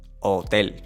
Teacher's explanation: The H in Spanish is going to be silent. We do not pronounce the H. Hotel. Just ignore it.